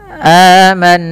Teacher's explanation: Cara membacanya adalah dengan menahan bunyi suara nunnya. Aman, sembari dimasukkan ke rongga hidung kita. Nah, kemudian dilepaskan dia 2 harakat. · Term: gunnah